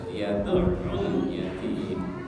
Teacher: ketika yad'ul ainnya ada tasdid ya, tasdid maka ditahan dulu, ditekan